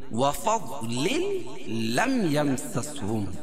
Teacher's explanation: ادغام ہوگا لام کا لام میں، لیکن غنہ نہیں ہوگا۔ وفضل لم یمسسہم، لم اظہار شفوی، یم میں بھی اظہار شفوی، کیونکہ میم ساکن کے بعد میم اور با کے علاوہ کوئی اور حرف ہے 29 حرفوں میں سے۔ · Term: ادغام بلا غنہ